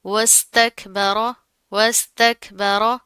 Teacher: را کے اوپر زبر ہے، موٹا پڑھا جائے گا